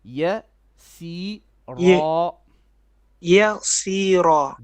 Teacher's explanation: The only letter that's heavy in this word is ra at the end.